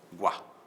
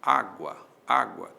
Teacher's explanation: Na sílaba guá existe uma vogal e existe uma semivogal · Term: ditongo